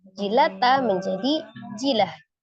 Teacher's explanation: huruf ta marbutah ketika diwakafkan ya ee maka dia jadi sukun ta marbutah ketika sukun menjadi bunyi huruf ha